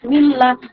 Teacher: এবার হচ্ছে ইদগামে লাম। বিন পরে যদি ইয়ার মালনের অক্ষর লাম আসে, তাহলে সেখানেও হচ্ছে বিনা গুন্নায় পড়তে হবে।